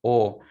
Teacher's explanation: Entonces sigue siendo fuerte, si es una vocal abierta o fuerte. La O se cierra un poquito, pero no impide que la vocal sea pronunciada de manera fuerte